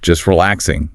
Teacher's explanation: The vowel in just or the A in relaxing, they often become a schwa, that weak little sound. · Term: vowel reduction